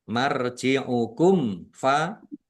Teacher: Idgham mutamasilain atau idgham mimi. Mim sukun bertemu dengan huruf fa marjiukum fa izhar syafawi dibaca jelas.